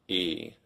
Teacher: your tongue is all the way in front fairly high up e and then you round your lips e um and so